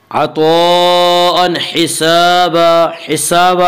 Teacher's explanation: الف مدہ کو ایک الف کے برابر کھینچ کر پڑھیں گے